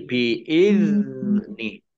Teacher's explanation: zal sukun itu bukan kolkolah, maka jangan dimantulkan